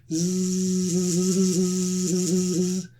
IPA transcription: z